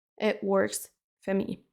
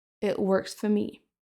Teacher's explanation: Attention à ne pas dire for avec le O, quand on le met dans une phrase, il va être réduit à for me. It works for me.